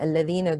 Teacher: Lam shamsiyya, idgham shamsi. Ya, natural mud extended for 2 counts.